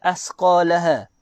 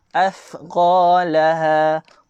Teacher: Huruf tha, makhraj dia dengan cara keluar lidah.